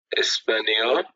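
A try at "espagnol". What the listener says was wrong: শেষে vowel plus L থাকলে উচ্চারণ করতে হয়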